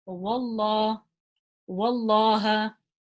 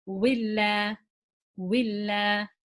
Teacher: So if the letter before the name of Allah has a fatha or a dhamma, we pronounce the lam in the name of Allah heavy. If the letter before has a kasra, we pronounce the lam in the name of Allah lightly.